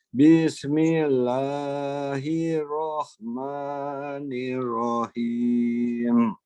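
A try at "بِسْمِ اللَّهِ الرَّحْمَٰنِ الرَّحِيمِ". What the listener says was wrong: Boleh dipendekkan lagi panjangnya. Bismillahi, langsung kan. Istilahnya boleh perketukan Prof ya. Bismillahirrahmanirrahim.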